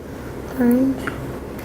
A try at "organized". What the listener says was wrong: It's not orange because you've got organ.